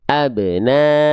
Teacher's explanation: qalqalah sugra itu pantulan yang kecil atau pantulan yang ringan. Maka dipantulkan dengan cara ringan saja.